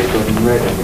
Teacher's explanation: the word and very often comes out as a syllabic consonant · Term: syllabic N